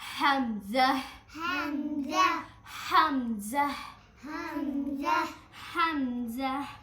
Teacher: حمزہ میں پہلے بھی ہا کی آواز نکلتی ہے اور لاسٹ میں بھی